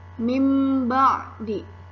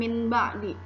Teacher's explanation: bunyi nun sukun atau tanwin ditukar dengan huruf mim sukun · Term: iqlab